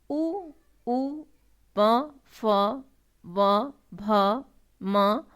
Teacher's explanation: उ, प, फ, व, भ, म वर्णों का ध्वनि स्थान ओष्ठ यानी ओठ है। दोनों ओठों के परस्पर मिलने अथवा सिकुड़कर गोल आकृति में आने पर ही इन वर्णों का उच्चारण होता है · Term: ओष्ठों के संयोग से निर्गत वर्ण